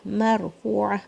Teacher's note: را کو بھاری پڑھنا ہے کیونکہ را کے اوپر سکون ہے. اس جب را پہ سکون ہوتا ہے تو اس سے پچھلا لیٹر دیکھتے ہیں کہ اس پہ اگر فتحہ ہے تو پھر را بھاری ہوتا ہے.